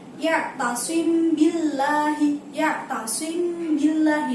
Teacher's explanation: Pengertian dari ikhfa syafawi adalah ketika ada mim sukun bertemu dengan ba. Nah, cara bacanya seperti apa? Cara bacanya yaitu samar-samar.